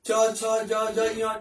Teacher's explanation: च, छ, ज, झ, य जो होते हैं वो तालु से उच्चारण किए जाते हैं, उनका उच्चारण स्थान तालु है।